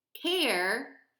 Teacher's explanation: Care, you hear your voice going up again, so that's a stressed syllable.